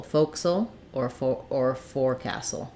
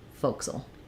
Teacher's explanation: So basically it drops out this castle. Yeah, it drops out the ca syllable